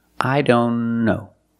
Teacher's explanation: Here the T is between consonants, so we don't pronounce it. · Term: silent